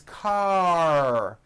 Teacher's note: Your tongue has to pull back. Car. And also your lips close a little bit in the front. The R needs to be very strong and you need to close the word.